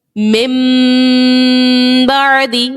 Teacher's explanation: ناک میں آپ کی آواز جا رہی ہے, لیکن کس طرح غنہ کر رہے ہیں ہم, ہمارے ہونٹ بند ہو رہے ہیں